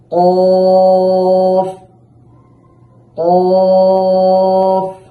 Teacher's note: এই কফের উচ্চারণ হচ্ছে জিহ্বার গোড়া তার বরাবর উপরের তালুর সাথে লাগাইয়া, অর্থাৎ আমাদের যে জিহ্বার গোড়াটা আছে এর বরাবর উপরে যে তালু আছে সেটার সাথে লাগিয়ে কফটাকে মোটা করে দুই ঠোঁট স্বাভাবিক রেখে উচ্চারণ করতে হবে।